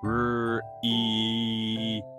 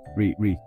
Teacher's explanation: for the r sound the tongue goes back and then moves forward slightly for E it sounds like r e notice how you smile a bit